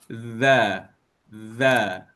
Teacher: Kalau zal dia za za lidah kita akan dikeluarkan sedikit